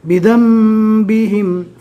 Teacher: نون ساکین کو میم سے بدل کر پڑھیں گے، یعنی نون نہیں پڑھیں گے، نون کی جگہ میم پڑھیں گے۔ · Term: اقلاب